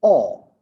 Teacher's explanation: or is a back open rounded vowel